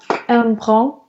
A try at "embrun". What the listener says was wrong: Не, наоборот. Первый такой глубокий on, а потом brun.